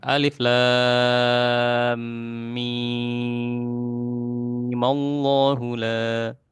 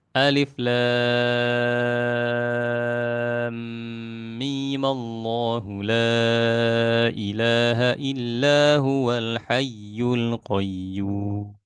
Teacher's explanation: Boleh kita baca 6 harokat karena memang asalnya kan 6 harokat ya. Mim yang merupakan apa namanya huruf muqatta'ah itu 6 harokat.